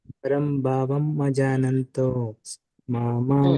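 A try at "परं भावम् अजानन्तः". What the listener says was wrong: ಅಲ್ಲಿ ಮಜಾನಂತೋ ಅಂತ ಹೇಳಬೇಡಿ ಪರಂಭಾವಂ ಮತ್ತೆ ಗ್ಯಾಪ್ ಕೊಟ್ಟು ಅಜಾನಂತೋ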